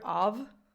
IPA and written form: ɑv (OF)